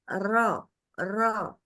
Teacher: ke belakang Jadi kalau la kena lidahnya itu ke bagian depan kalau ro masih langit-langit bagian depan tapi agak ke belakang sedikit mundur dan dia posisinya bergetar